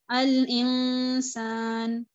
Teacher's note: جیسے کہ نون ساکن یا تنوین کے بعد اگر آپ کو حروف اخفا نظر آئیں تو آپ یہاں پر کامل گنہ کرتے ہیں. الانسان، نون کی آواز کو ہائڈ کر دیتے ہیں لیکن آپ یہاں پر گنہ بھی کرتے ہیں